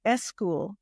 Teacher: she was a Spanish speaker and she had really noticeable epenthesis